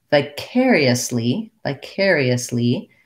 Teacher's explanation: then when we have vicariously vicariously it's a little tougher because i again have to do the ee the tense e's but in quick unstressed syllables so for that i might try doing the n sounds first